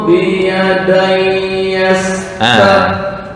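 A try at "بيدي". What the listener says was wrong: Hamzah qata. Nah, masih ragu nih, mau diwasolkan atau emang wakaf yang utama? Wakaf dulu. Jadi terlalu pendek. Tadi hanya 2 harokat. Ya walaupun boleh, tapi ntar mengefek ke semuanya. Bagusnya standar tengah-tengah 4. Kan 2, 4 atau 6 untuk mat aridi disukun ya. Kalau ini 2, ntar ini 2 minal kafirin.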